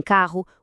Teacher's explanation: Em carro, os dois Rs criam um som forte e não dois